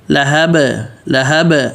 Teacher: لام ہا بالکل واضح, اور با پہ قلقلہ